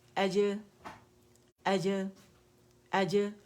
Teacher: Arabs کیا کرتے ہیں اس میں قلقلہ پروڈیوس کرتے ہیں, جنبش دیتے ہیں اس لیٹر کو